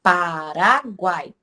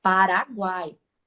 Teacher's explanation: a gente pode caracterizar como tritongo eles formam uma sílaba única